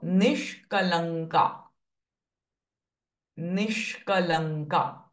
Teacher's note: sh and k are conjunct sounds and the nasalized ng with k.